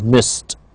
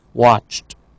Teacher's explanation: if we have an unvoiced sound however we have merely the sound T